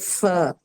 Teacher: you can feel a friction while the air is released in the production of these sounds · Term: fricative sounds